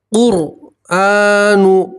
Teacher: रा सकीन से पहले पेश है, रा को मोटा पढ़ेंगे, पूर पढ़ेंगे